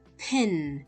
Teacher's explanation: Parang nagpipigil ka ng hangin tapos pag release mo ng sound ng P, may lumabas na air na pin. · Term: puff of air